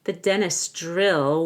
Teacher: end of dentist and before the apostrophe s dentists drill drill the Dr sounds like a Jr not drill but drill you'll want to round your lips there the dentist drill